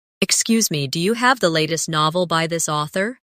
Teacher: In casual speech, do you often sounds like dia